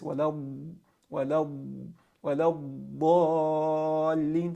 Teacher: the tongue is going to stretch out laterally to either one side of the bottom molar teeth or both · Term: istitala